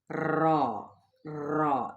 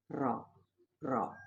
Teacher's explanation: حرف کی ادائیگی کے وقت زبان کی نوک سے آواز میں ہلکی سی لرزش کا پیدا ہونا، اور یہ را کے تنگ مخرج کی وجہ سے ہوتی ہے۔ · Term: قدرتی لرزش